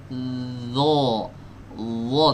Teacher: huruf dha saat mengucapkan itu nempelnya ke ujung gigi atas. Dha tapi tebal.